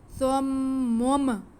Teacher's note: نون کی اینڈ میں جو آواز آ رہی ہے ہم نے اس نون کی آواز کو میم میں بدل دینا ہے